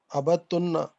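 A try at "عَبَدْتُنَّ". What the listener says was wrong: अबतुन्ना, जबरदस्त.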